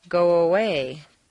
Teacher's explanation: if a word ends in O, your lips are going to be in the forward position, so a W, a W, quite naturally leads into the next sound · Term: slight w sound